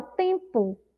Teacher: essa sílaba que tem som de u é uma sílaba fraca